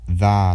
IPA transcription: ð